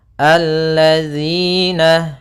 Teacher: kasrah bertemu ya sukun panjangnya dua harakat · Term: mad thabi'i